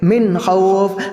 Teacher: اور من خوف کے اندر اظہار حلقی ہو رہا ہے، یعنی کہ نون ساکن کے بعد حروف حلقی کے 6 حروف میں سے خ آ رہا ہے تو وہاں پر ہم گننا نہیں کریں گے